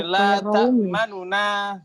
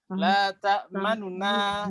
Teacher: harokah domahnya dibaca suaranya kurang lebih 2/3 ya. Jadi la ta'manuna gitu. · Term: ikhtilas